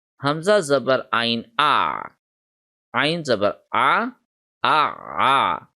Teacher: the sound of the ain will be originated from the center of the throat